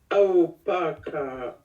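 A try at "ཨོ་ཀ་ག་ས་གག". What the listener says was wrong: Non. Il n'y a pas de pas. Ao, ka, ga, sa, kak.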